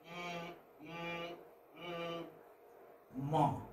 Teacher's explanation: Is a voiced bilabial nasal. Ma is a voiced bilabial. Why? See, you know, the two lips are articulating, they're touching each other.